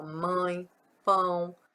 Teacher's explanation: Os ditongos nasais são sempre fechados, né? Então, o nome já está falando, ó, nasal, sai mais pelo nariz. É o sonzinho mais nasal.